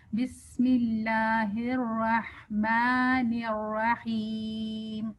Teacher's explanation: بسم اللہ الف کے جو ہے اس کی ساؤنڈ 2 حرکت تک کھینچیں، لمبی کریں